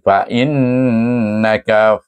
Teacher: nun nun bertasdid, wajib didengungkan, wajibul gunnah dengan dengung 2 rakaat. Fa innaka, jangan baca fa innaka tak ada dengung tu.